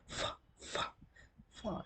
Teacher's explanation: Here, to produce these fricatives, fa, fa, fa, to produce fa sound, labiodental, upper teeth and lower lip. These two are involved here to produce this sound.